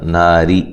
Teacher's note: تو وقف کی صورت میں را کو موٹا پڑھنا ہے. ملانے کی صورت میں را کو باریک پڑھا جائے گا